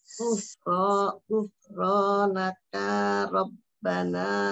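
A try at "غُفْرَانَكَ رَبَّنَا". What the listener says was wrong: Ah, naknya jangan panjang.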